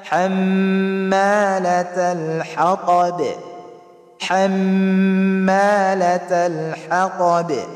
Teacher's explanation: Ang mim dito ay musyaddada na may kasamang mad.